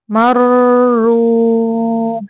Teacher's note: یہاں پہ را پہ تھوڑی دیر رکنا ہے، یعنی مشدد لفظ کی ادائیگی کر کے ادا کرنا ہے